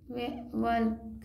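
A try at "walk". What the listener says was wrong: वल्क, L तो पढ़ना ही नहीं है। अरे एल तो पढ़ना ही नहीं है। डब्लू क्या बोलेंगे, डब्लू को क्या बोलेंगे, वह बोलेंगे। और ए को क्या बोलेंगे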